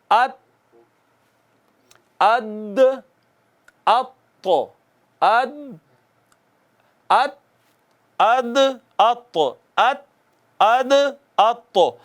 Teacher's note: ये जो ज़बान की नोक है ना, नोके ज़बान, जब ये ऊपर वाले दो दांतों की अंदर जड़ों को लगती है